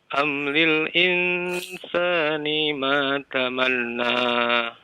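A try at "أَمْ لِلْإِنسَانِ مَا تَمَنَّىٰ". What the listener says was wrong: Tamanna ada tasydid, ditahan 2 harokat ya.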